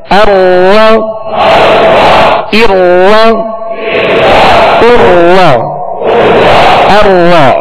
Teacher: रा को उसके मखरज से अदा करेंगे तो रा में कपकपाहट सी होगी, कपकपी पैदा होगी, जिसे कहते हैं तकरार